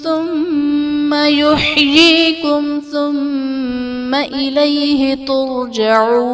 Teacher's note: یحییکم میں میم ساکن کے بعد حرف با اور میم کے علاوہ ثا ہے، یہاں بھی اظہار شفوی کا قاعدہ ہوگا، یعنی میم ساکن میں ہم غنہ نہیں کریں گے۔